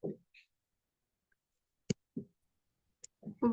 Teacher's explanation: It is pronounced from the wet part of your inner lips.